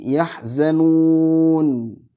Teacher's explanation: bunyinya kayak tadi yahzanun kemudian jangan langsung nutup ya bibirnya ya kalau sudah ngucapin nun sukun itu jangan langsung nutup nanti jadi kecampur dengan mim sukun · Jadi ada sifat tawasud namanya, enggak terlalu ngalir, enggak terlalu padat. Makanya bunyinya kayak tadi, yahzanun.